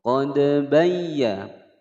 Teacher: Hukum bacaan qalqalah sughra. Qad bayya ada ya bertasydid ditekan tidak boleh didengungkan